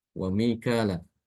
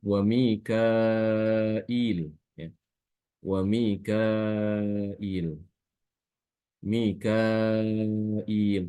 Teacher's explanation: dia dengan menambahkan huruf hamzah setelah huruf kaf